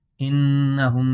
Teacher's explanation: انہم میں نون مشدد میں ہمیشہ غنہ ہوتا ہے اور یہاں پر اظہار شفوی بھی ہے۔